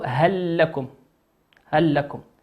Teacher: هل لكم بعد الهل كلمة لكم، وبداية حرف اللام في كلمة لكم تدغم وتصبح هل لكم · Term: حكم الإدغام